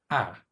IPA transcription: a